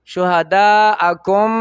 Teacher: وته ادغام مثلین شو شفوي او سره د غنې بی شهداءکم د دو میمونو په ځای به یو میم شي او غنه زمانی به شي